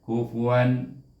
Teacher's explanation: Kemudian kita bertemu dengan iaitu kalimah yang ke 4, iaitu kaf baris depan ku, kemudian fa baris depan fu, kemudian waw alif di sini tanwin bertemu dengan hamzah, dibaca dengan izhar halki wan, jangan dengungkan dia, kufuan. Terus kepada kalimah yang berikutnya, hamzah baris di atas a, kemudian ha baris di atas ha, kemudian dal baris 2 di atas, baris depan 2 di atas, iaitu bunyinya dun, ahadun.